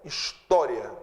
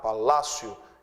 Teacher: Bom, essas 3 palavras são palavras paroxítonas, a sílaba tônica é a penúltima, sílaba tônica de história é o tó